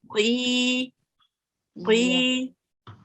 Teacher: the qaf is read from your throat